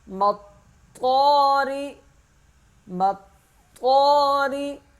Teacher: میم طا کے ساتھ سختی سے مل جائے گا اور طا ایک الف کے برابر کھینچا جائے گا